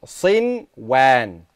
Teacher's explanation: you make إظهار of the noon, even though a waw comes after it